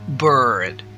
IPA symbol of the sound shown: ɝ